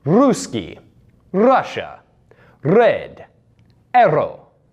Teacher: It's that trilled R sound, which is due to the fact that the tongue is doing so much articulation work that it flips back and forth on the roof of your mouth, making that R sound.